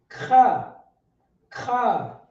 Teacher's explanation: It's a hard CH sound, like kha, like you got something stuck in your throat.